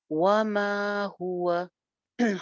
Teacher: وما واو پہ ہونٹ گول، میم ایک الف لمبا، وما ہوا ہاں پہ پیش پہ ہونٹ گول کریں گے اور واو کا مخرج بھی گول ہونٹ ہے